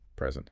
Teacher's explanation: If you stress the first syllable, it means a gift.